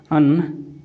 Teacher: जब हम उच्चारण करेंगे अगर स्वर को तो हवा जो है मुंह के साथ-साथ नाक से निकलता है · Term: अनुनासिक